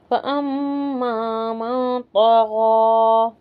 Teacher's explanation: यहाँ पर देखें फ़अम्मा मीम पर तजदीद है, अच्छे से गुन्ना करके पढ़ेंगे. और नून साकिन के बाद ता है तो यहाँ इख्फा होगा